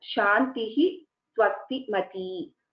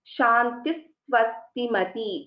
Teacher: So when we are pronouncing a Visarga and when a Visarga is succeeded by a Sakara, then it takes the form of Sa